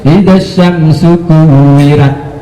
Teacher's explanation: Jadi ro itu jelas vokal O.